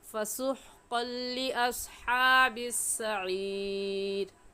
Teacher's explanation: فسحقل کی تنوین پر ہم غنہ نہیں کریں گے کیونکہ تنوین کے بعد حروف یرملون جو کہ 6 ہیں، یا غا میم لام واو نون، یرملون ان میں سے لام آ گیا ہے، اس لیے اس تنوین پر ہم غنہ نہیں کریں گے بلکہ جلدی سے پڑھ جائیں گے